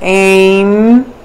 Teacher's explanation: The last portion of the vowel just before it becomes more nasal. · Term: anusvara